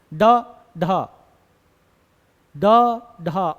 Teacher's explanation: उत्क्षिप्त व्यंजन, अब उत्क्षिप्त व्यंजन की अगर हम बात करें तो यहां पे जीभ की नोक झटके से नीचे गिरेगी